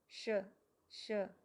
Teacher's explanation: जो श षटकोण वाला है उसको बोलते हुए हमें अपनी मूर्धा को छूने की कोशिश करनी है।